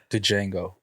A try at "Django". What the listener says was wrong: I thought the D was silent.